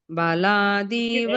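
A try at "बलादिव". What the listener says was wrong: ಬಲಾದಿವ ದೀವ ಅಂದ್ರೆ ಮತ್ತೆ ಅಲ್ಲಿ ದೀರ್ಘ ಇಲ್ಲ, ದಿ ಕಡೆ. ಬಲಾದಿವ ನಿಯೋಜಿತ. ಬಲಾದಿವ ಬಲಾದಿವ.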